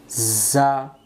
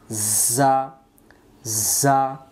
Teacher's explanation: যা অক্ষর সামনের নিচের দাঁতের আগা থেকে শীষ দিয়ে পড়তে হয়